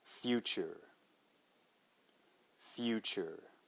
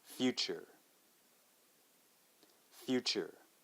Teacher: difference here is of course we will start the same way we'll say fee but then we got to add that kind of u sound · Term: y u sound